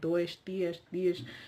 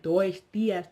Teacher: Obviously, so when they now talk, you will definitely hear a major difference, because European Portuguese will have more of a sh sh at the end, like dois dias, dias, and then the other one will sound like dois dias, blah, blah, blah.